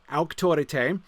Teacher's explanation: Major sort of diphthongs that we do have, the AU in autorité, that's ow